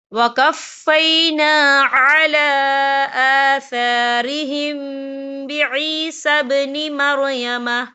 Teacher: میم ساکن کے بعد جو ہے با آ رہا ہے، تو یہاں پر اکفا شفی ہوگا، تو ہم یہاں غنہ بھی کریں گے